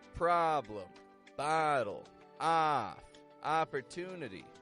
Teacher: This ah sound is clear in short O words like problem, bottle, off, opportunity.